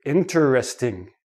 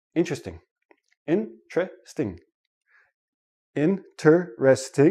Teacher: in everyday speech interesting interesting interesting I have four syllable syllables when I actually say it naturally it becomes three syllables and the T and the r become like a CH